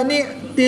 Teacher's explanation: حمزہ ساکن ہے تو اس کو ہم جھٹکا دے کر پڑھیں گے. کھڑی زبر کے بعد حمزہ دوسرے کلمے میں ہے تو یہاں پر مد منفصل ہوگی، 2 سے 3 الف تک کھینچ کر پڑھیں گے.